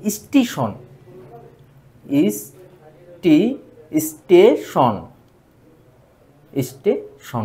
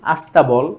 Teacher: আদিতে আমরা একটি স্বরবর্ণের আগমন ঘটায় এটাই হচ্ছে আদি স্বরাগম